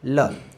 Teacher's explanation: जीभ के आगे का भाग मसूड़ों को स्पर्श करता है और वायु है जो पास से निकल जाती है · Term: पार्श्विक व्यंजन